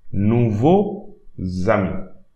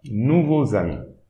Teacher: the Z, the imaginary letter should be at the beginning of the second word. Not at the end. We should not pronounce it at the end of the first word, but at the beginning of the second word. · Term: imaginary letter Z